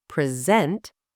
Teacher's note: Example, the word present, stressed on the first syllable, present, is a noun, a gift, something you give. The same word, stressed on the second syllable, present, is a verb